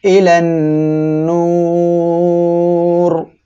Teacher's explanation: র সাকিন তার ডাইনে পেশ থাকায় কি করতে হবে, মোটা করিয়া পড়তে হবে